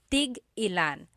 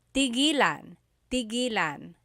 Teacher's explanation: when there's a hyphen in it, you have to have that glottal stop.